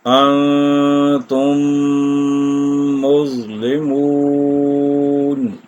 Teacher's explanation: پہلی میم دوسری میم میں مدغم ہو جائے گی، یعنی مل جائے گی اس کے اندر · یہ اخفا ہو رہا ہے کیونکہ نون ساکن کے بعد تا ہے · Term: ادغام شفوی